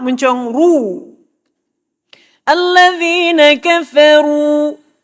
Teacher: memuncungkan bibir untuk dhamma.